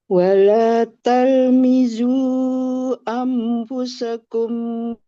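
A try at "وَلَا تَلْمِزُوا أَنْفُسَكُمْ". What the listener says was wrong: Nah, ini angnya kurang. kurang.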